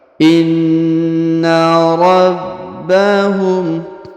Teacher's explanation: Huruf na berharokat tasdid, maka kita tahan dan kita tekan